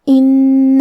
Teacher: کلمت ان کیونکہ نون پہ تشدید ہے تو ہم یہ حرف کو 2 حرف کے برابر پڑھیں گے